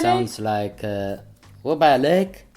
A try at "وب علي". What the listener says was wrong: عليك. علي. علي. Not عليك means you. علي. وب علي.